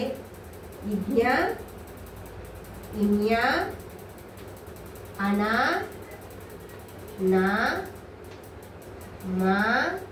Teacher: ముక్కు ద్వారా పలకబడే అక్షరాలని నాసిక్యాలు అంటారు